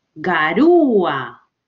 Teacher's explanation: La mayor fuerza de voz está en U. Entonces la separo de A y le coloco la tilde.